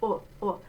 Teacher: The lips are still puckered, but it's not oo, it's a little more open.